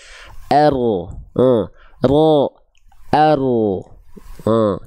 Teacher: Karena dia nggak nempel. Ro, yang nempelnya tuh bagian punggung lidah, bukan ujungnya banget, tapi punggung lidah. Nah, tengah lidah itu gak nempel sehingga membuat celah kecil di sana. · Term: huruf ro